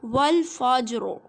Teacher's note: را ساکن ہے، اس سے پہلے جیم بھی ساکن ہے، لیکن اس سے پہلے فا کے اوپر کیا ہے، زبر ہے، تو را کو موٹا پڑھیں گے